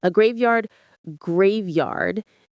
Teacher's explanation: The stress is on the first syllable, grave.